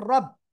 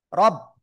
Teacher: রব আসবে রব, রর উপরে জবর মোটা আওয়াজে পড়বো আমরা